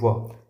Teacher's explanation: दंतोष्ठ व्यंजन मतलब दांत और ओष्ठ दोनों का हमने इसमें उपयोग किया है। तो इसमें याद रखना कि व जो है दंतोष्ठ व्यंजन है।